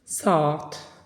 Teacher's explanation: tələffüz eləyərkən A-lardan biri düşür, digəri isə daha uzun tələffüz olunur